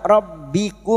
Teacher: Mir rabbikum masuk pada huruf ba, rabbikum mim sukun bertemu waw idhar safawi, mim sukun dibaca jelas tanpa mendengung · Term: idhar syafawi